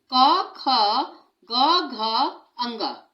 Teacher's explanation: का वर्ग का उच्चारण स्थान कंठ है। कंठ माने गला। इसके जो व्यंजन है गले से बोले जाते हैं